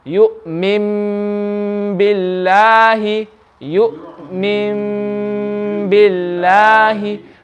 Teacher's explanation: we're going to change the noon into a meme. We're not going to do it slowly, we're going to do it straight away.